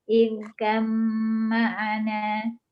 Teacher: ba sukun diidghamkan ke dalam mim dengan sempurna atau idgham kamil disertai tempo dengung 2 harokat, yaitu menjadi huruf kedua yang ditasydid.